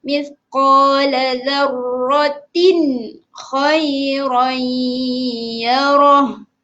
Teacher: dengungnya dekat khairan sahaja. Ratin tu tak dengung sebab dia jadi hukum izhar.